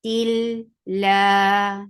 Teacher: lafzul jalalah will be light because there is kasra before it